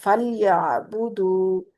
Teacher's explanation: आइन पे झटका नहीं है, हमजा पे झटका होता है साकिन हमजा पे, आइन पे नहीं, आइन को वस्ते हल्क से अदा करें